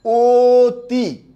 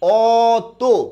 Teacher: এখানে অ থাকা সত্ত্বেও অ এর একটা উচ্চারণ ওর মতো আর আরেকটা উচ্চারণ অর মতো